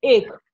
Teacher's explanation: ए पे दीर्घ और का पे लघु